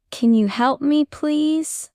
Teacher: Let your voice go up at the end to sound polite.